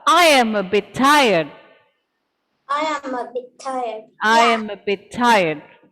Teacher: sounds coming together which are the same one sound is dropped and we pronounce it only once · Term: twining sounds